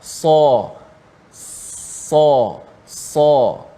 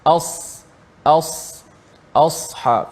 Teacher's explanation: pangkal lidah kita terangkat bila menyebutnya dan menjadikan huruf itu dapat dibezakan dengan bunyi huruf sin yang lebih mudah kita sebut sebab dia tak tebal. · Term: huruf sad